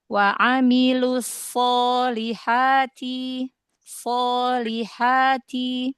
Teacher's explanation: Sod, coba jangan masuk ke hidung